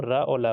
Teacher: दंत के मूल से जड़ पे जीभ टकराते हुए यह हम रा और ला को बोलते हैं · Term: दंत मूल